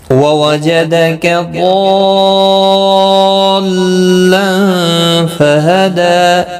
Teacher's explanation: ضاد مستعلیہ ہے، پر پڑھا جائے گا، مد لازم ہے، یہاں پر 5 الف کی مقدار کے برابر کھینچ کر پڑھیں گے